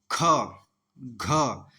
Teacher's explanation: तो इन्हें बोलने पे हमारे मुख से वायु की मात्रा अल्पप्राण की तुलना में ज्यादा निकल रही है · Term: महाप्राण